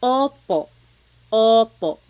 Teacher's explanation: Sometimes I think of it like having a ball in your mouth. Your tongue gets kind of pushed back and down a little bit and the inside of your mouth is open and wide. So Oo, like OPO. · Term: letter O